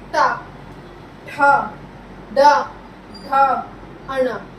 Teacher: ये हमारी जीभ जो है, हमारी टंग जो फोल्ड होके मुंह के पीछे वाले हिस्से से टकरा रही है, इसलिए हम क्या कहते हैं इसे मूर्धन्य।